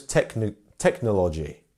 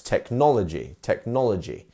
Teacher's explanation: Some people may pronounce this technology, which no, it should be technology. We should be having the second syllable as our stress.